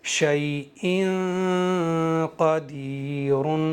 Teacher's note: اس تنوین کے اندر جو نون ساکن چھپا ہوا ہے نا، شیء، ہم پڑھ رہے ہیں ان، تو لاسٹ میں نون کی آواز آ رہی ہے، اس نون کو ناک کے بانسے سے گنگناتے ہوئے ادا کرنا ہے، اور زبان کی نوک کو مسوڑوں پر یا کہیں بھی ٹچ نہیں ہونے دینا ہے۔ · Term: اخفا